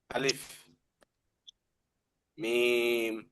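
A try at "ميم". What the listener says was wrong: 4 আলিফ টানতে হবে। মিম।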